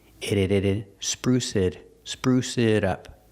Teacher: The T in it changes to a fast D.